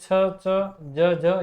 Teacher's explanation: ये स्पर्श करने के साथ संघर्ष भी होता है, मतलब जो मुखांग है उनमें संघर्ष भी होता है, इस कारण इनको स्पर्श संघर्षी कहते हैं।